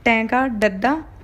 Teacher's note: ਜੀਭ ਨੂੰ ਉਲਟਾ ਕੇ ਜੋ ਬੋਲਦੇ ਆ